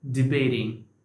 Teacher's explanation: T is after a stressed vowel which is a and also T is before a vowel which is unstressed so it should be pronounced as a flap T